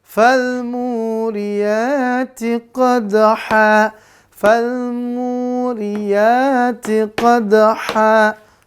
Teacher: An-nya diganti menjadi fathah dengan alif, tanwinnya dihilangkan. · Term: mat iwat